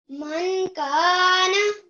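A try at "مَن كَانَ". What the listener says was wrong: नून को थोड़ा सा 2 सेकंड करो थोड़ी सी लंबाई और करो बेटा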